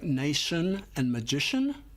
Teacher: The ti and the ci have a shh sound.